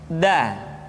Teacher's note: Selanjutnya pengucapan huruf da. Da diucapkan dengan menyentuhkan ujung lidah kita dengan bagian gusi-gusi dua gigi seri bagian atas. Da. Nah, kesalahan yang sering dilakukan adalah menyentuhkan ujung lidah dengan langit-langit.